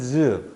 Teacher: 상태에서 즈 하면서 마찰이 생기는데 최종적으로 즈 하고 벌어지죠 즉이 친구가 마찰과 파열의 두 가지 성질을 모두 갖고 있기 때문에 파찰 음이다